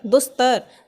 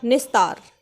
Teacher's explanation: और त और थ हो, यानी कि इनका उच्चारण त और थ का उच्चारण दंत से होता है, तो जो विसर्ग है ये हमारा दंत्य स में बदल जाएगा।